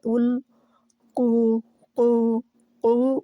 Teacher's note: قو موٹا ہے، قو جو ہے قا موٹا حرف ہے، زبان کی جڑ اوپر اٹھے گی